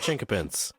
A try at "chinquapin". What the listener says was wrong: It's not qua, like a QU.